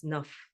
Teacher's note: because nah is followed by P from PR when you combine those sounds the nah becomes Naf and you'll see that it actually helps you go straight into